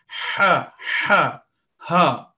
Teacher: Ha, which is very similar to jim, is a thick letter, and we have to pronounce it from the end of our throat.